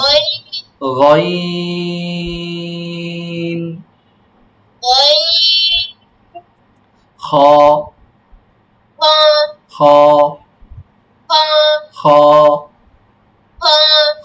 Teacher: ৩ নং মাখরাজ, কণ্ঠনালীর শেষ ভাগ হইতে